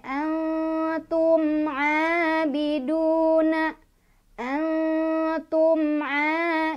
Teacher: Jadi mimnya dibaca jelas, jangan ditahan, jangan berdengung. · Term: izhar syafawi